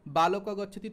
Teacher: ঠোঁট দুটো লাগাতেই হবে পরস্পর, মানে ওষ্ঠ এবং অধরকে একসঙ্গে আনতেই হবে, না হলে ব উচ্চারণ হবে না। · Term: ওষ্ঠ বর্ণ